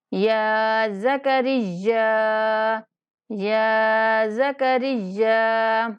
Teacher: را کو یا کے ساتھ ملاتے ہوئے یا کو سختی سے پڑھیں گے اور 4 الف تک لمبا کر کے پڑھیں گے